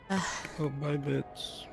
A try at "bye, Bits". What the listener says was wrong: When you say bye, Bits, it kind of sounds like you're saying bye, bitch. So it's like, bye, Bits.